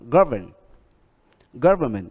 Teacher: Government thì vẫn nhấn ở âm đầu, không thay đổi âm nhấn.